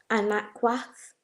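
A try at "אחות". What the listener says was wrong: Okay, so anakwath would be a different, I don't know if that's a different word, but there's no na. There's no na in the word sister. It'd be aquath. So to say sister, it would be aquath, right?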